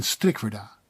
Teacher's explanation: The rolling Dutch R is also unfamiliar to most. It may remind you of the Scottish R, but is more subtle, like in strikwerda.